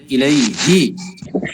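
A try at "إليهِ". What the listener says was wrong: এখানে কিন্তু হু হবে না, হি হবে, খেয়াল করবেন। ইলাইহি, ইলাই, ইলাইহি হু না, ইলাইহি, এটা উচ্চারণ এরকমের।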